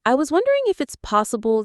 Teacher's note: The whole phrase, I was wondering if it's possible, has a gentle rising melody leading up to the main point. Then, the stress falls on the key words, possible, late, checkout